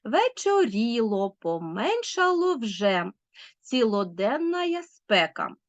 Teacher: трискладова стопа з наголосом на третьому останньому складі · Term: анафест